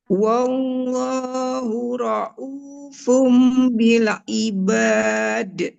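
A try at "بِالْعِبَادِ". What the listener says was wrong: Nggak tebal, Ibu. Cuman lamnya agak memantul. Bil ibad. Hati-hati untuk harokatnya, ya Ibu.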